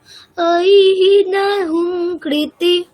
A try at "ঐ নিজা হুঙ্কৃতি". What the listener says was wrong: জ কেমন? ভালো করে শোনো, একই সুরে বলবো। ঐ নিজা হুঙ্কৃতি মাত্রা নিরাকৃতা।